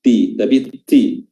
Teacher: ta atau ti ya, memiliki sifat hams, ti ya, dikeluarkan dengan baik sifat hamsnya, jangan ti saja, ti, tapi ti.